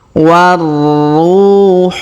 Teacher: Huruf ru kita panjangkan 2 harokat karena waw sukun di depannya · Perhatikan huruf wa langsung sambung ke huruf ra atau ru di sini yang berharokat tasdid ya. Kita tahan dan kita tekan.